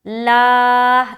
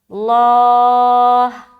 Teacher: لا یہ بولیں گے تو باریک ہوگا، اللہ یہ بولیں گے تو موٹا ہوگا